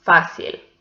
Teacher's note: this one belongs to llanas because the stressed syllable is the penultimate one. So this word ends in a consonant which is not n or s, and it has an accent mark on the vowel.